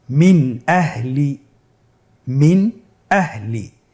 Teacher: আমরা জানি হামজা ইজহারের হরফ। তাহলে আমরা এখানে নুন সাকিনকে স্পষ্ট করে পড়ব, গুন্না ছাড়া পড়ব।